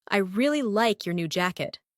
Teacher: The stressed words are really, like, new, and jacket.